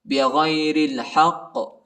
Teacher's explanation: ہا کو قاف کے ساتھ ملائیں گے اور ادھر قاف کو جھٹکا بھی دینا ہے اور وقف بھی کرنا ہے